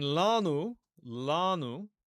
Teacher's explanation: Notice where the stress falls. It's on the a.